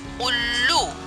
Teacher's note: उल्लू में उ के बाद आधा ल और फिर पूरा ल का प्रयोग किया गया है, क्योंकि उल्लू बोलने में ल का उच्चारण 2 बार होता है, एक बार कम आवाज में, दूसरी बार ज्यादा आवाज में। इसलिए पहले आधा ल और फिर पूरा ल का प्रयोग किया गया है।